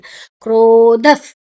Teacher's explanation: ಧ ಮಹಾಪ್ರಾಣ ಒಂಚೂರು ಫೋರ್ಸ್ ಪಾಡ್ದ ಪನೋಡು. ಧ ಸ್ಟ್ರೆಸ್ ಮಲ್ತ ಪನೋಡು ಆಪುಂಡು.